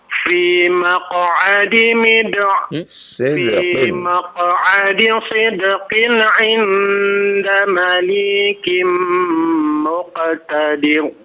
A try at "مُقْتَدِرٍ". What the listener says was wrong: Muqtadir, tipis dibacanya, jangan ditebalkan ya. Muqtadir ya. Jangan ditebalkan ya. Muqtadir, ditahan tipis bacanya. Memang belum paham untuk menebalkan dan menipiskan bacaannya ya.